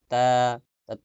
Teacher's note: মুখ বুজায় ধরে রাখলে ভেজা জায়গা যেটা আসে ওইটাই বা উচ্চারণের স্থান। এরপর তা, জিহ্বার আগা সামনের উপরে দুই দাঁতের গোড়ার সঙ্গে লাগে।